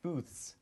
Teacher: And no way, that's what he was saying? Because the TH in booth, as we pronounce it, is non-voiced, we add the S sound to the end, so it would be pronounced booths.